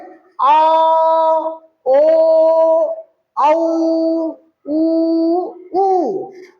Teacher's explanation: ये सारे स्वर बोलने में ही स्पष्ट हो रहे हैं कि पीछे से जीवा के पीछे से आवाज आ रही है